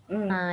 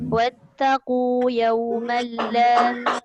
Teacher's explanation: Sama ada idgham ma'al-gunnah ke bila gunnah, kita tengok dia jumpa siapa. Maka kita tengok dia jumpa lam, jadilah idgham bila gunnah. Jadi tak ada dengung. Masuk sahaja.